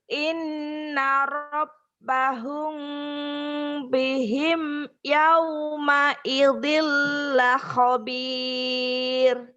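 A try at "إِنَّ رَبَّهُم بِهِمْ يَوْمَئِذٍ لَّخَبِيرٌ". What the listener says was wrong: Nggak ada masalah dengan bacaan udah bagus, tapi lagumu nol. Lagu mah nggak enak. nggak nol banget ya. Iya nih, tinggiinnya gini ya. In inna rabbahum bihim yawma idil khabir. Ayo tinggi.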